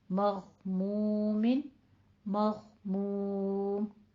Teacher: کہاں سے ادا کر رہے ہیں غین کی آواز؟ ادنا حلق سے